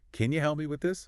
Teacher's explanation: Can you often reduces to can you? The vowel gets shorter, weaker. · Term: Unstressed, can ya